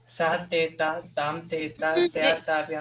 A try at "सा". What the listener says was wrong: सा तेता, सा विसर्ग मत बोलना। सा, देखो मैंने कहा तो कहाँ विसर्ग है, नहीं ना।